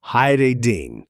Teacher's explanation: Notice the D again gets that soft flap treatment in casual speech